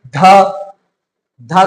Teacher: ध, ध कर बोलने में क्या हो रहा है? जीभ जो है वो दांत में सट रहा है